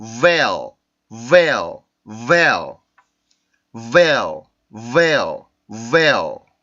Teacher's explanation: 그래서 그냥 veil 이게 아니라 veil 이렇게 에 뒤에 하나 소리가 어떤 모음이 하나 있는 것처럼 발음이 되죠. 그게 바로 그 dark L 발음의 특징입니다.